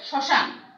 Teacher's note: মটা উচ্চারণ হচ্ছে না, এই জন্য সেই শব্দটির উচ্চারণ সানুনাসিক হচ্ছে